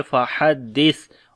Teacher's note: اور جب سا کو نرم پڑھیں گے اور جب رکیں گے صفت ہمس آ جائے گی، فَحَدِّثْ، سانس جاری ہوگا۔